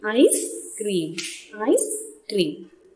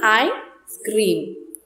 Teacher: So there is a pause after I.